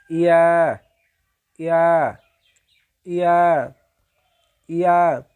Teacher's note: জিহ্বার মধ্যভাগ তার উপরস্থ তালুর সঙ্গে লাগিয়ে উচ্চারিত হয়